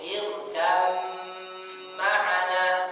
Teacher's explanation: bnya jadi ba itu langsung dimasukkan ke huruf mim secara sempurna irkam maana jangan dibaca irkab maana dengan Qalqalah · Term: Idgham mutajanisain